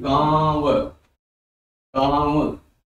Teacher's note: अब देखिए आपका मुंह भी हिल रहा है और आप नाक के बल से भी बोल रहे हैं। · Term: अनुनासिक या चंद्र बिंदु